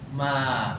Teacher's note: Jadi di sini huruf alif alif alif yang tak ada baris dia panggil huruf mad. Huruf mad makna kalau asalnya ma kita baca pendek ma tapi bila ada alif situ ma panjang sikit. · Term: mad asli